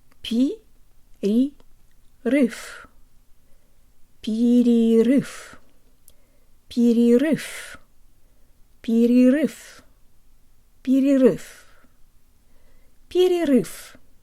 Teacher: The only other thing to know is that the V sounds like an F